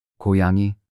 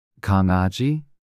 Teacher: start by making the k sound as in kite but then add some voice to it so that it sounds more like G in go